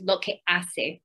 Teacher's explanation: we have that definite glottal stop in there where we wouldn't have that in other dialects of spanish